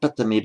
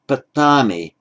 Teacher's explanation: because it's first person in a thematic verb, this a is always lengthened